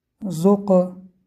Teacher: Буква Каф, когда с сукуном, дает эхо, является из буквы Калкала